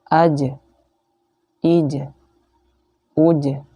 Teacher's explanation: Kenapa ada e-nya di ujungnya? Karena huruf jim ini termasuk huruf yang mantul ya. Jadi harus dipantulkan ketika sukun.